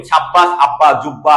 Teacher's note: সাব্বাস যখন আমি বলতেছি, তখন আমি দুইটা ব উচ্চারণ করতেছি